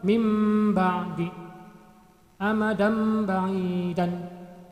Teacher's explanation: nun mati atau tanwin cara membacanya itu dibalik menjadi mim mati Kapan itu apabila nun mati atau tanwin bertemu dengan huruf ba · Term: iqlab